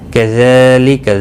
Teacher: ذال کے اوپر کھڑی زبر ہے، ایک الف کے برابر کھینچ کر پڑھیں گے